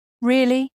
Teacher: If I say it in a flat tone, really, it sounds boring. But if I say it with rising intonation, really?